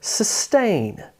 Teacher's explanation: It has emphasis on the second syllable. The first syllable, s, is smaller.